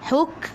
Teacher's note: Huk sikit sahaja angin. Sifat huruf kaf hamas.